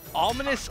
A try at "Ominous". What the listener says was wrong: Ominous? Sounds like you said Alminous.